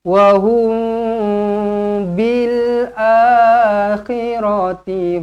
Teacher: mim kosong bertemu dengan ba ikhfa syafawi dengungkan 2 harakat